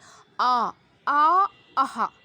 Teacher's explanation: इनका उच्चारण होता है कंठ से